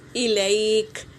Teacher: کاف پر سکون دے دینا ہے، زبر نہیں پڑھنا ہے، جیسے الیک، اس طرح سکون دے دینا ہے، جزم لا کر اسے سکون کر دینا ہے، وقف کر دینا ہے۔